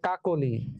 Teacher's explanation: মধ্য অ এর পরে যদি রস্বই বা রস্বউ থাকে, তাহলে সেই মধ্য অটা সংবৃত হবে, মানে ও হয়ে যাবে।